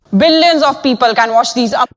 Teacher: The P-pop, lack of aspiration. Billions of people, target word people, sounds like beeple.